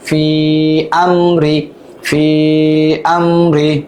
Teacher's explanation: ফি, হামজা মিম জবর আম, অন্য শব্দের শুরুতে হামজা আসছে, তাহলে এটা 3 আলিফ টান মাদ্দে মুনফাসিল